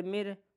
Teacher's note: اس میں را باریک ہوگی کیونکہ را سے پہلے زیر آ رہا ہے